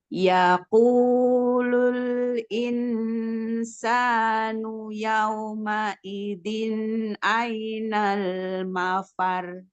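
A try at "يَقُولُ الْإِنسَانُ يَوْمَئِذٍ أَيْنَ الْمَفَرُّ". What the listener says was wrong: Ini roknya kita bacanya tebal ya. Jadi al-mafar ya gitu ya.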